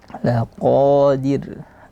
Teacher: ra yang terakhir adalah tipis, tidak boleh tebal